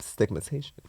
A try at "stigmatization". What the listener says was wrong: You left out one of the syllables. Stigmatization.